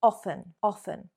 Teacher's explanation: There we are omitting, leaving out the T sound, often.